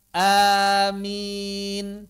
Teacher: hamzahnya mad, mimnya mad, tapi enggak pakai tasdid